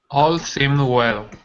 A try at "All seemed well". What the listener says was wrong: Give me a little bit more D. Dwell. All seemed well.